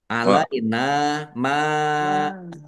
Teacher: yunazzila alaina nun fathah alif mad thobi'i panjang dua harakat ya isab ya alaina maidatan mim fathah alif mad thobi'i tetapi karena bertemu dengan huruf hamzah dalam satu kata maka menjadi Mad wajib muttasil. Mad wajib muttasil harus dibaca panjang lima harakat.